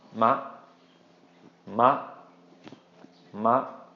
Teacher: Okay, short and high. Just cut it off, don't draw it out. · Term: short high tone